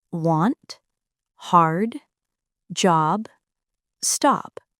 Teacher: The vowel sound a as in want, hard, job, stop. This is the deep a sound. The tongue stays low and back and the sound feels open and rich. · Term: deep ah sound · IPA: /ɑː/